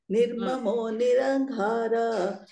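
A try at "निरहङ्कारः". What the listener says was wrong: nirahankaraha There is a visarga. Nirmamo nirahankaraha.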